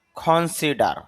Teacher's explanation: আফটারনুন বিকেল ওয়াক র sound কম হবে কাজ করা নাউ এখন কনসিডার শেষে র সাউন্ড কম হবে